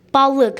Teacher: Balıq məsələn a dodaqlanmır, ı dodaqlanmır.